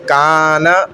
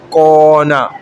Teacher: جیسے دیکھیں کانا, اب کاف کیا ہے؟ باریک ہے, اس کو موٹا پڑھتے ہی نہیں ہے, بھلے اس پہ زبر ہے, اس کی وجہ سے الف بھی باریک ہو گیا